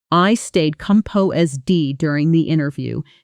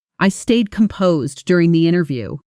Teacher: They flow together, almost gliding into each other, and the main stress lands heavily on the word composed